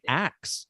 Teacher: In the southern US, they say ax for ask.